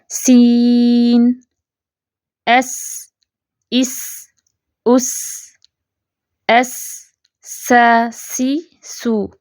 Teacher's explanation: سین کو تھوڑا سا لمبا کر کے ادا کیا جاتا ہے جب ہم بطور حرف پڑھ رہے ہوتے ہیں۔ سین کی آواز باریک کھلی ہوئی ہوتی ہے، سین کی آواز چلتی ہوئی محسوس ہوتی ہے۔